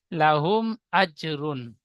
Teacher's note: জিমের উপরে সাকিন এসেছে, হরফে কলকলা 5টি অক্ষরের মধ্যে একটি অক্ষর জিম, তাই জিমকে কলকলা করে পূর্বের অক্ষরের সাথে মিলিয়ে পড়তে হবে। · মিম সাকিনের পরে বা মিম ছাড়া অন্য অক্ষর হামজা এসেছে, তাই মিমকে বিনা গুণায় জাহির করে তাড়াতাড়ি পড়তে হবে, একে ইজহারের স্বাভাবিক বলে।